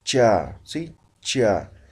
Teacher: estamos articulando detrás de los dientes superiores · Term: palatales